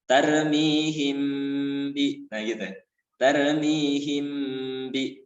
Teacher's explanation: mim mati dibaca berdengung, jadi jangan terburu-buru saat membaca mim berdengung tadi, melainkan ditahan sekira-kira dua harokat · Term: ikhfa sapawi